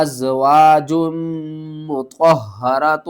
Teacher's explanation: جیم کو ہم نے میم سے ملانا ہے، میم مشدد ہے، غنہ کریں گے۔